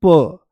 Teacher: तो जैसे ही हम बोलते हैं प तो प बोलती आराम से कम प्राणवायु ज्यादा जोर नहीं लगाना पड़ा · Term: अल्पप्राण